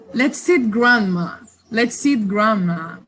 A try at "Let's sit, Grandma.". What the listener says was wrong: Okay, so Grandma sounded like she got eaten both times. So try it again.